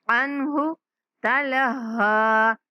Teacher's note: عنہ اس نون پر اخفا نہیں کریں گے، اظہار کرنا ہے